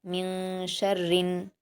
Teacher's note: रा को ज़ेर है, बारीक पढ़ेंगे सख्ती के साथ, लाम से मिलाकर।